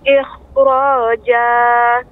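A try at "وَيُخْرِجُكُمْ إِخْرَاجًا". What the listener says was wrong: Kha-nya diperbanyak. Wa yukhrijukum ikhraja. Dan juga tebal.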